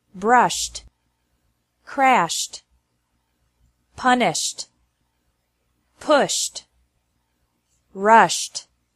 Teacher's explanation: e d is pronounced like T after verbs ending with an sh sound brushed crashed punished pushed rushed and after verbs ending with a